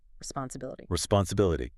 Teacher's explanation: The primary stress is on the second I, responsibility.